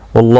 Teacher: اللہ کا لم زبر کی وجہ سے پر پڑھا جائے گا